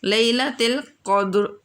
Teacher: قاف موٹی آواز نکالنی ہے، دال قلقلہ کرنا ہے اور را کو سائلنٹ کرنا ہے، تو اس کی تھوڑی سی آواز محسوس ہونی چاہیے، ٹھیک ہے۔